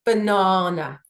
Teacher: the emphasis is on the second syllable. And that is characteristic for the word banana, whether I say it fast or slowly.